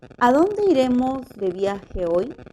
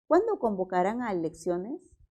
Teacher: estas oraciones interrogativas pronominales siempre poseen entonación final descendente